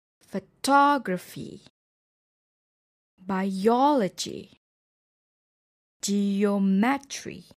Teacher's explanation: For words ending with "fee," "g," "tree," the stress is on the third from the last syllable of the word.